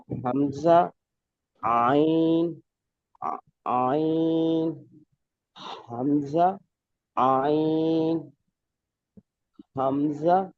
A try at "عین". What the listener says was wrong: حمزہ نہیں پڑھیں گے اس کو پڑھیں گے آ آ